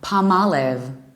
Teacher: the stress remains in the second syllable